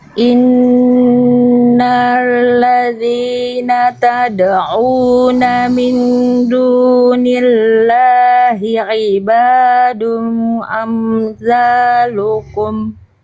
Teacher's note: Tahan dulu gunahnya dua harakat lagi.